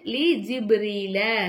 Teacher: கல்குலார் சட்டத்தில் நம்ம என்ன செய்யணும், பாவை அசைச்சி ஓதணும்